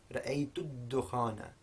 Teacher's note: we're not pronouncing either the connecting hamza or the lam. We're going straight from the da to the dal.